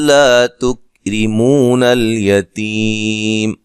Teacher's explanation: را کو باریک پڑھنا ہے، را کے نیچے زیر ہے